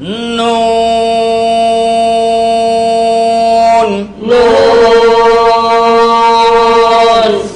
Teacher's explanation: 9 নম্বর মাখরাজ, 9 নম্বর মাখরাজ, জিহ্বার আগা, জিহ্বার আগা, তার বরাবর উপরের তালুর সঙ্গে লাগাইয়া